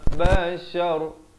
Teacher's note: bashar, ra jadi tebal di sini